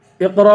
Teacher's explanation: قاف کو بھی پر پڑھیں گے، را کو بھی پر پڑھیں گے